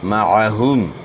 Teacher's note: عین کی ادائیگی جو ہے نا یہاں آپ نے خیال کرنا ہے کہ عین کا مخرج جو ہے گلے کا درمیان ہے